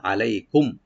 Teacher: আলাই আইনটাকে ওপেন করে, লাই এখানে হরফিলিন, আর মিম সাকিন এখানে আমরা এজাহার করব, এখানে গুণা হবে না।